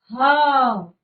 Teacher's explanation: जब हम ह का उच्चारण करते हैं तो क्या होता है कि वायु कंठ से आ रही है और हमें जोर लगाना पड़ रहा है उच्चारण के लिए, जिस कारण एक वाइब्रेशन सी हो रही है और उसी के कारण जो वायु है वो गर्म हमारे मुख से आती है और इसीलिए हम इसे कहते हैं ऊष्म व्यंजन।